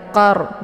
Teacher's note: tafkhim yaitu bacaan tebal ya qor dengan posisi ujung lidah terangkat ke langit